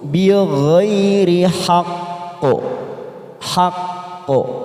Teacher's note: huruf q yang bertasdid dan ketika kita wakaf di di sini maka kita pantulkan yang kuat namanya qalqala Kubro